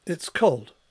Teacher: in the first utterance it's cold we've got a falling pitch Contour on on the cold word